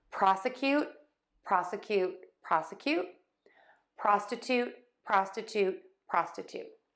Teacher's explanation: stressing syllable 1 in both of these words, unstressed middle syllable, secondary stress on that last syllable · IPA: /ˈprɑsəˌkjut/ ; /ˈprɑstəˌtut/